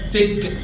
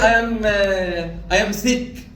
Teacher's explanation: This is th. The tip of the tongue is between the upper and lower teeth.